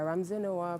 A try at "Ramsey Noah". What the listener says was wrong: Ramsey Noah. You don't whisper when you mention his name. You say it well. Ramsey Noah.